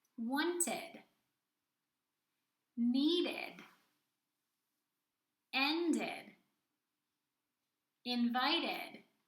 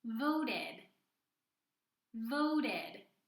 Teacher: I am clearly pronouncing the ED sound which adds an extra syllable to the end of each word